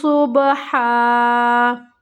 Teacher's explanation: سیٹی کی آواز نہیں آئے گی کیونکہ یہاں پر سین نہیں ہے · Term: صاد